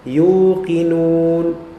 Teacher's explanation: dhammah ketemu dengan waw yang mati, maka dia menjadi mad. Mad tabi'i asli dua harakat.